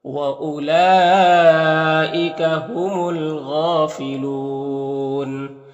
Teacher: لام میں جو مد یہ مد متصل ہے، اور یہاں پر الف لام حروف قمری غین کے شروع میں ہے تو لام کو پڑھیں گے، الف کو نہیں پڑھیں گے. غین حروف مستعلیہ میں سے پر پڑھیں گے، کھڑا زبر ایک الف کے برابر کھینچیں گے، اور یہاں پر وقف کریں گے تو مد عارض وقفی ہوگا، تو اس طرح سے پڑھیں گے.